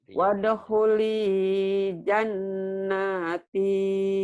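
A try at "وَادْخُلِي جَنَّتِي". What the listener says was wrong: Jannati nyamber. Jannati. N-nya ditahan, na-nya dilepas tapi. Bukan jannati, bukan. Jannati, ayo.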